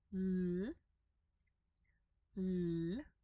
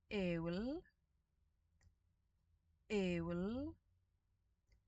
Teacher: the double L, which is my personal least favorite letter, is basically just your L sound, but longer